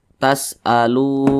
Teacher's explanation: Mad thi'i panjangnya dua harakat atau kira-kira dua ketukan